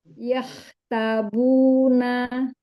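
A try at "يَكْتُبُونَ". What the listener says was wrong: Yahtubuna, bukan tabu.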